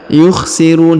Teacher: huruf pemberhentian huruf na disukunkan atau dimatikan karena berada di ujung ayat atau di ujung bacaan.